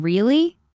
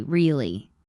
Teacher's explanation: Rising tone, curiosity, really. Falling tone, confirmation. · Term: intonation